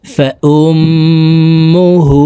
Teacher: হার উপরে উল্টা পেশ আছে ঠোঁট গোল করে এক আলিফ টেনে পড়ব